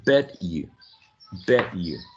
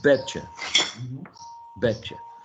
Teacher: u turns into the schwa, so it becomes a weak vowel. And the other one is that t and y become ch.